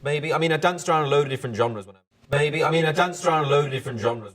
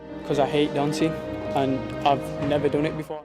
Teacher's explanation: In most northern accents, the diphthong, 2 vowel sounds, in words like dance and last, become one single sound, a flat A.